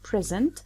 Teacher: we get the noun when we stress the first syllable